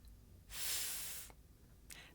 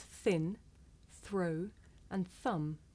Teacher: I make the sound by sticking my tongue up just a little bit and blowing air between my tongue and my top teeth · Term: voiceless consonant